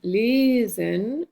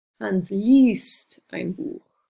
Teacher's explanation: we get this lesen, e, and then it changes to i